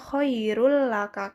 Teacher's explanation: Jadi dibacanya khairul laka karena dimasukkan. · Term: idgham bila gunah